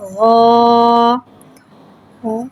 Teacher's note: غین کو ایک الف یعنی 3 حرکات کے برابر کھینچ کے پڑھیں گے۔ غین حرف مستعلیہ ہے، لہٰذا اس کی آواز حلق سے موٹی ادا ہوگی۔ الف کو بغیر کھینچے پڑھیں گے۔ · الف مدہ کو ایک الف یعنی 2 حرکات کے برابر کھینچ کے پڑھیں گے اور زبر کا منہ کھول کے ادا کریں گے